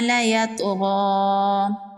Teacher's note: طا حروف قلقلہ میں سے ہے، طا پر قلقلہ ہوگا اور طا کو پر پڑھیں گے